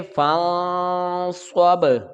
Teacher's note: با ساکن ہے تو حروف قلقلہ ہوگا، آواز لوٹ کر آئے گی، جنبش ہوگی یہاں پر